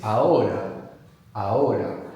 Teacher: The H is silent, so it's A-H-O-R-A.